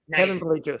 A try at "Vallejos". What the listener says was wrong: Stop saying L. Stop saying the L sound. Vallejos.